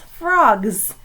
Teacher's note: that S is making the Z sound in frogs